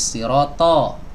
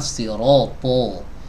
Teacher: cara mengucapkannya adalah dengan mengangkat lidah belakang ya jadi lidah belakangnya Ini diangkat hai ditegangkan gitu jangan dibuat rileks kalau rileks nanti di jadi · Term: tebal